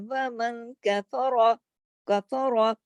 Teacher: کاف اور فا دونوں باریک ہیں، صرف را موٹا پڑھا جائے گا، لیکن اتنا جتنا لکھا ہوا ہے.